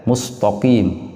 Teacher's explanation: Kemudian qf itu mempunyai huruf ee mempunyai sifat al-isti'ala yang artinya tebal karena terangkatnya ee pangkal lidah ke langit-langit. Sehingga karena huruf yang tipis bertemu dengan huruf tebal kadang-kadang taknya kemudian terpengaruh menjadi tebal